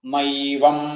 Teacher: ന ഏവം, അത് നൈവം എന്നാവും